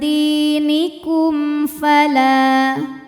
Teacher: mim sukun menghadapi huruf selain mim dan ba, di mana ini hurufnya adalah huruf fa, maka mim sukun kita bunyikan dengan jelas m ya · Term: idhar syafawi